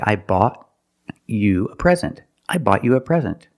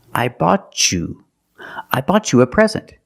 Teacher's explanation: when I have t before the Y I can make the chch sound